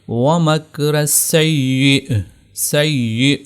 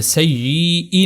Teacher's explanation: حمزہ ہم نے گویا کہ جھٹکا دے کر اس کو یہاں پر حمزہ کو ظاہر کرنا ہے۔